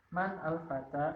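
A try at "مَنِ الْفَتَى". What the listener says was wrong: Nah, man, nunnya sukun. Al-fata ada alif lam. Berarti sukun jadi kasroh. Manil fata.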